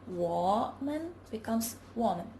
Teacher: a third tone loses its final rise and is pronounced as a low falling tone when it occurs mid-phrase